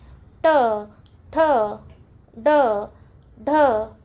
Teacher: मूर्धन्य वर्ण याच्यामध्ये जिभेचा स्पर्श टाळू आणि कंठ म्हणजे आपली जी टाळू आहे आणि जो गळा आहे यांच्या मधला जो भाग आहे याला स्पर्श करते